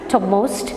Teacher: In the case of topmost നമുക്ക് നിർത്തി പറയാൻ പറ്റത്തില്ല. We could say it in only one utterance, topmost, where p becomes incomplete. So such words are called as nasal plosion.